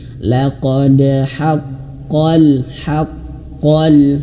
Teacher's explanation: Nah di sini ada ha mengalir nafas, ha dan tipis ya, jangan ho tapi ha.